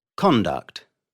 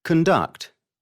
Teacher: The stress is on the first syllable of the word when it is a noun and the second syllable when it is a verb. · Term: Changing stress